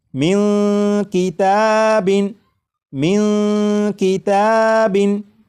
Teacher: سے آ چکا ہے، لہٰذا اس نون ساکن میں اخفاء ہوگا، یعنی اس نون ساکن کی آواز کو ناک میں چھپا کر غنہ کر کے پڑھیں گے